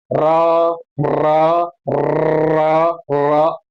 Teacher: जीव में दो तीन बार कंपन होता है · जीभ में 2-3 बार कंपन होता है, वो प्रकंपित व्यंजन होता है।